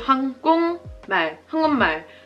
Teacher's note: the m sound, right? It changes the giok to an ng sound. 한국말. Not 한국말.